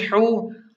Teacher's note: ہا کو حلق کے درمیان سے صاف نکالیں